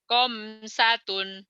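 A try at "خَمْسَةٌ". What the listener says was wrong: Saya dengernya kayak orang Jawa komsatun ya. Orang Jawa kho itu jadi ko. Ko jadi ho, go jadi ho, goiril jadi hoiril gitu ya. Khamsatun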